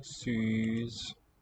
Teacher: It's a front round and long vowel.